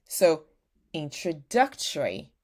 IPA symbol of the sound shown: ə